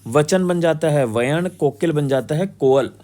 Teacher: अल्पप्राण व्यंजन का अ और य में रूपांतरण होता है।